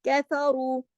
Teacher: कैफरू, ये कैफ बारीक लेटर है, लेकिन रू को हम मोटा पढ़ेंगे, इसलिए कि रा कंडीशनल हैवी है। जब रा पे जबर या पेश आ जाए तो रा मोटा पढ़ा जाता है, ठीक है।